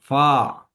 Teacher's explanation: फा को पढ़ते हुए जो हमारे ऊपर वाले सनाया उलियां हैं वो नीचे वाले होंठ के ऊपर लगेंगी, अंदर वाली साइड पे